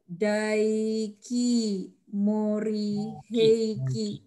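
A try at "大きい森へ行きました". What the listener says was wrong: Bukan dai kan? Oki.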